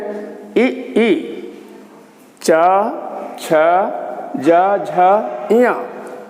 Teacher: दूसरा खंड है जो ताल से बोलते हैं